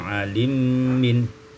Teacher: alima min idghamul mimi fil mim, diidghamkan mim pada mim maka menjadi alimin.